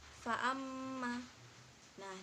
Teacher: pada kata Farm mag nah disitu terdapat hukum bacaan hunah sebab mim bertasydid dan cara membacanya dengan dengung serta ditahan tiga harokat